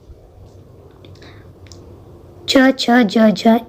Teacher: हमारे तालु का प्रयोग हो रहा है च, छ, ज, झ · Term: तालव्य व्यंजन